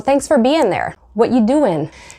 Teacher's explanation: instead of using ing with the ing sound, they will sometimes cut it short and say in